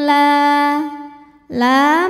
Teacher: Alif yang sebelumnya berbaris fathah maka cara bacanya lam ini panjang dua harakat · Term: Mad Thobi'i